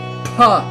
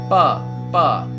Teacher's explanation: P without any air. No air coming out.